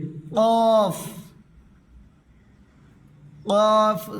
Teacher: জিহ্বার গোড়াতে উপরে দেখবে একটি আলা জিহ্বা আছে। আলা জিহ্বা থেকে উচ্চারণ হবে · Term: বড় কফ